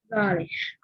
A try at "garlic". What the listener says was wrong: Okay, good.